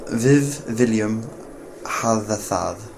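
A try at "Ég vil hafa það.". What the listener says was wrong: Yeah. That was totally perfect.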